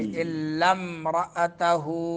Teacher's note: الف گر جائے گا درمیان سے، لام کو میم کے ساتھ ملائیں گے